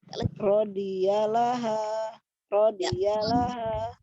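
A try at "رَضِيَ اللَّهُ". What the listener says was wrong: Ya, jangan terpisah karena dia kan pendek semua, ro pendek dari ro sampai like. Rodiyalaha, rodiyalaha. Seperti itu teknik bacanya.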